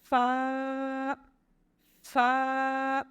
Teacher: فا جو ہے یہ اوپر کے دانتوں کے کنارے اور نچلے ہونٹ کے تر حصے سے ادا ہوتا ہے. فا، فا، یعنی کہ دانتوں کا کنارہ ہمارے نیچے والے جو ہونٹ کا جو تر حصہ ہے وہاں جا کے لگے گا تو یہ فا ادا ہوگی.